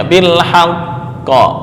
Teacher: yaqdiru bil haqqi, dibaca mengikuti harokat sebelumnya bil haqqo, karena sebelumnya berharokat fathah.